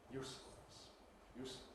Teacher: And again, you can see why usefulness has an oo vowel that is really quite short in its duration. It's affected by Pre-Fortis clipping, the its of use, and by the rhythmic clipping, the need to fit in fullness.